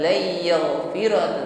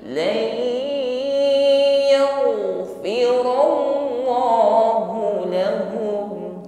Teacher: Berarti nun sukun lan ini langsung kita idghamkan, masukkan pada huruf ya, bukan lagi lan tetapi lai. Setelah masuk pada makhraj huruf ya bi gunnah, ya, sempurnakan dengan bunyi dengung, jangan hanya idgham. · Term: idgham bi gunnah